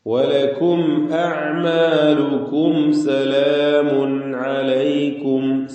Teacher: തൻവീനിന്റെത് ഇൽഹാർ ഹൽക്കി ശേഷം ഹൽഖിന്റെ അക്ഷരം ഐനാണുള്ളത് അതുകൊണ്ട് ഈ ഇൽഹാറിന് ഇളഹാർ ഹൽഖി മണിക്കാതെ വെളിവാക്കി തൻവീനിനെ ഉച്ചരിക്കുക സലാമുൻ അലൈക്കും